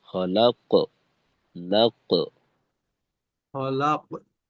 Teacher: দ্বিতীয় অংশের আওয়াজটা একটু বেশি জোরালো হয়